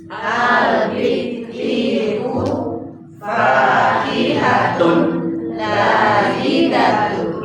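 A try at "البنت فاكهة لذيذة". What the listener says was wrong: Lanya pendek, ladzidatun. Bukan panjang nih, karena lanya fathah biasa.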